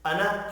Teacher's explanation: الف مدہ ہے لیکن کھینچ کر نہیں پڑھنا، انا کھینچ کر نہیں پڑھا جائے گا۔